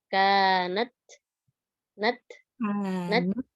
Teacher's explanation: syiddah kita tahan dulu nih suaranya enggak ngalir